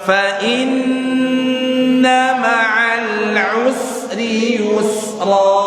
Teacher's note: tahan nunnya, nun tasydid